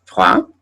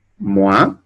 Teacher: la O y la I que se pronuncia wa. Bien, wa, su símbolo fonético es una W y una A